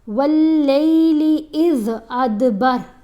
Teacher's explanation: دال کے اوپر کلکلا کرنا ہے